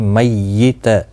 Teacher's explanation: تشدید کا خاص خیال رکھیں اور تا کو کھینچنا نہیں